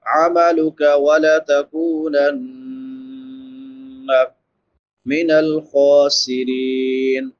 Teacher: خا موٹے حروف میں سے ہے، اس کو پر پڑھیں گے. خا کے اوپر زبر ہے، کھڑی زبر ہے.